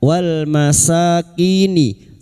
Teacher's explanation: lam takrif yang bertemu mim izhar qamariah